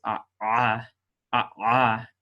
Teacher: some people will pronounce it as a voiced pharyngeal fricative which is a in the back of the throat and it